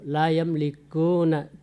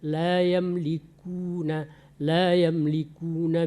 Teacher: hampir mendekati O ya benar-benar huruf u dia